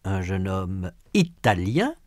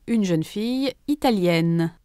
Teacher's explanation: In sound, the feminine forms américaine and italienne have a final consonant n that the masculine forms do not.